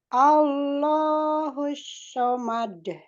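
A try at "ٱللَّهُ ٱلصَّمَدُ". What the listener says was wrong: Itu masih huruf, masih ada sifat tafasyi'nya. Jangan sho ya, tapi so.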